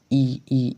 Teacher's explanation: ई ई ई का उच्चारण स्थान तालू आ रहा है